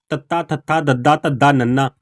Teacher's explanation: ਜੀਭ ਦਾ ਅਗਲਾ ਹਿੱਸਾ ਦੰਦਾ ਨਾਲ ਚੂੰਦਾ